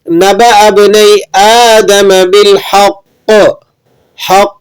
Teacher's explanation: تو اب ہم نے یہاں پر دونوں چیزوں کی رعایت رکھنی ہے, یعنی قلقلہ بھی ادا کرنا ہے اور سختی کے ساتھ بھی وقف کریں گے